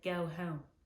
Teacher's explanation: our o sound is higher than a typical pronunciation of an o sound